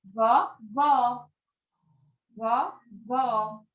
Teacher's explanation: O acento circunflexo, que tem o som mais fechado, que representa o vovô, e o acento agudo, que tem o som mais aberto, que significou aí vó.